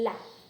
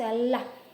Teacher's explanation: Então, por exemplo, falar o L, lá. Eu sei que o ápice da minha língua, que é a ponta da língua, vai até os meus alvéolos. Ou seja, então eu só faço lá.